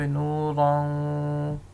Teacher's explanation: یہ ناک میں بات جا رہی ہے، ادغام غننے کے ساتھ ہو رہا ہے